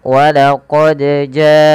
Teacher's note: Ja ini panjang disebabkan karena adanya Hamzah yang datang setelah hurufnya dan dia terdapat pada satu kata maka kita membacanya panjangkan empat harakat walaqod jaakum nah seperti itu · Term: mad wajib muttasil